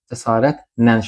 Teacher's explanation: A-nı uzadırıq, cəsarətlə şəklində. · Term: səs uzanması